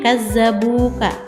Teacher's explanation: Karena ada dhamma bertemu dengan waw sukun. Itu hukumnya adalah mad tabi'i dipanjangnya 2 harakat bacanya